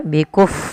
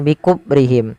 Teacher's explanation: alirkan nafasnya ketika fa, karena fa salah satu sifatnya hamas